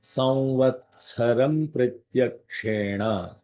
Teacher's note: give a little bit of Mahaprana for the tsa